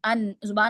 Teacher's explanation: जुबान कहां लग रही है दांतों के पीछे ऊपर लग रही है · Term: नून के मखरिज